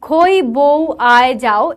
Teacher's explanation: মনে হয় যেন কিছুটা উচ্চারণ করে থেমে যাচ্ছি সম্পূর্ণ রূপটা আমরা উচ্চারণ করছি না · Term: অর্ধস্বর